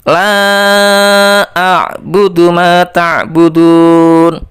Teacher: la-nya itu dibaca 5 ketukan. Itu juga dibaca panjang.